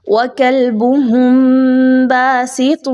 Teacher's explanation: میم ساکن کے بعد با کا حرف ہے تو اچھے طریقے سے غنہ کرتے ہوئے پڑھیں گے · اخفا کیجئے، نون کی آواز کو 2 پیش کی ساتھ جو نون کی آواز آ رہی ہے اس کو چھپائیے